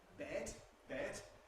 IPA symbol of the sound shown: bet